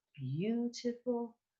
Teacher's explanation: it's an e sound first going to the u but we don't want to stay on the eu